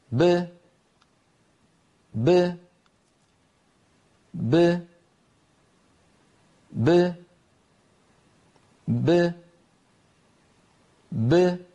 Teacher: باء ساكنة مقلقلة تخرج بتباعد الشفتين دون تباعد الفكين